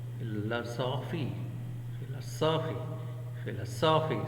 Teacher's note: So we give stress or accent stress on a third syllable.